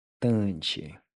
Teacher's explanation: When you pronounce the first t, the tip of the tongue should press against the backside of the front teeth.